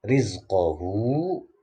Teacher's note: ini ro tarkik karena ro-nya berharokat kasroh